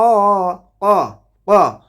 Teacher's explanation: বাআসা আশকাহা আশকাহা আশকা ক ক কফ হরফটা উচ্চারণ হবে জিহ্বার গোড়া তার বরাবর উপরে তালুর সঙ্গে লাগাইয়ে